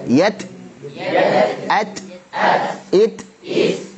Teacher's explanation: Polanya tetap T, hanya kemudian bocor nafasnya atau anginnya.